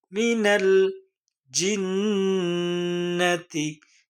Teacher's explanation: জিমের উচ্চারণ জিহবার মধ্যখান একটু শক্ত